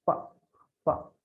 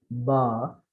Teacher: P is voiceless. Say pa, pa. There is no vibration. But if you say ba, there is a vibration. Fine. This is the difference between voiceless and voiced.